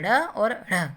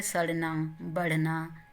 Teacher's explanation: इन व्यंजनों को बोलते हुए हमारी जिह्वा पहले ऊपर उठती है, उसके बाद झटके के साथ नीचे आती है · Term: उच्छिप्त व्यंजन